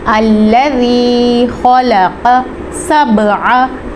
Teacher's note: یا ساکن سے پہلے زیر آ جائے تو وہاں پہ یا مدہ کا قاعدہ ہوتا ہے، ہم نے اس کو لمبا کر کے پڑھنا ہے